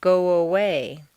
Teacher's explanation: if a word ends in o your lips are going to be in the forward position so a w a quite naturally leads into the next sound go away you don't want to say go away and break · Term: liaison, W glide